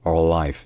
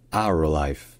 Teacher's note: si on veut dire notre vie, insister sur le fait que c'est la nôtre, ça devient our life